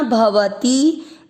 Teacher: भव, दोनों अक्षर पूरे दोनों में अमिक्स करेंगे। भवती, ती की मात्रा छोटी, लंबा नहीं खींचना